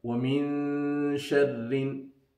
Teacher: وَمِنْ شَرِّ, again noon sakin. After noon sakin, there is a letter of ikhfa, so we will have ikhfa here.